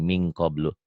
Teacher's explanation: hati-hati bila nun mati atau tanwin bertemu dengan kaf dan kop, engnya banget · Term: Ikhfa